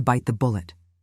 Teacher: Emphasize bite naturally and let bullet flow softly to mimic native speech.